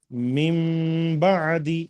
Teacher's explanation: नून साकिन के बाद अगर बा आया तो मीम का साउंड आता है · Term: इक़लाब